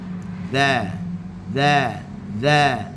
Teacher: hujung lidah di hujung gigi atas za dan kita datarkan lidah kita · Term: huruf zal